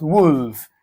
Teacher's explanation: the sound is a short back vowel sound